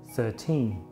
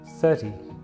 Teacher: In the word 13, the stress is on the second syllable, 13, while in 30, the stress is on the first, 30. Also, practice listening for the n sound at the end of 13, something you won't hear in 30. It's a soft sound, but the sound is definitely there, and with some practice, you can get better at hearing it. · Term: word stress